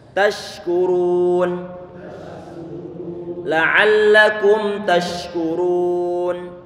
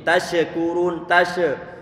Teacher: huruf shin dia punya sifat rikhawah, berarti suara dibuat mengalir, dan juga tentunya ada hamesnya, berarti angin dibuat mengalir